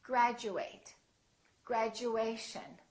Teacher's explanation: Instead of saying chew, it sounds like we're saying Jew.